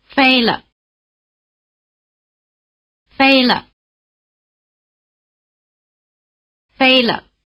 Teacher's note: After the high tone, the pitch of the neutral tone is almost at the bottom. Listen for the drop and try imitating it.